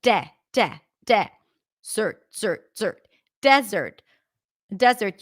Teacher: desert where the stress is on the first syllable